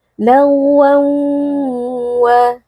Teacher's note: tanwinnya kita leburkan ke dalam huruf waw, kemudian disertai dengan adanya dengung atau gunnah yang dipanjangkan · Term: idgham bi gunnah